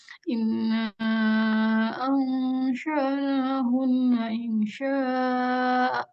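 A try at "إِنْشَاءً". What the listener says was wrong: Insya'a. Insya'a. Nah, ini kalau wakaf di sini, hamzahnya nggak mati ya, Mbak. Hamzahnya dibaca, dia jadinya maf'iwat. Hamzahnya dibaca, kemudian ada 2 harkat. Insya'a, 2 harkat. Nah, jadi nggak dimatikan, kecuali kalau hamzahnya tadi barisnya 1, fathah aja. Tapi kalau fathatain, maka bacanya harus mat'iwat. Mat'iwat itu maksudnya dibaca 2 harkat. Insya'a gitu. Enggak.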